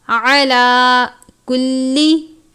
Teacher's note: عین کو باریک پڑھتے ہیں ، لام کے اوپر کھڑی زبر ہے، باریک والی کاف ہے،